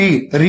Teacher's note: ऋ जब हम बोलेंगे तो यह हमारे दांत के ऊपर वाले हिस्से को स्पर्श करता है